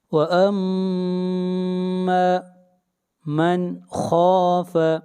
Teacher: جحیم، جحیم هي المأوى، فإن الجحيم هي المأوى، وأما من خاف، نون ساکن کے بعد حروف حلقی میں سے خا ہے، نون کے اوپر اظہار کریں گے ، خا کو موٹا پڑھیں گے، خا حروف مستعلیہ میں سے